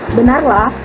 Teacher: Pada kata ini diagram nadanya itu dari rendah ke sedang.